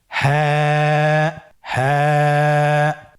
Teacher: হাফটি উচ্চারণের স্থান কন্ঠনালীর শুরু হতে